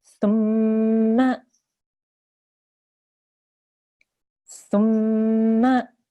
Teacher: Okay, so if you can hear, if you listen very carefully, you can hear that I'm holding that meme sound and pushing on it for about 2 seconds. And also you can hear the sound which comes from the nasal pipe, the nose pipe. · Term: nasal sound